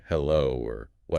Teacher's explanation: The second tone is a rising tone. It's a quick ramp up from your mid-range to your high range. It should feel like you're asking a question.